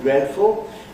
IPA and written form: ˋdredfl̩ (dreadful)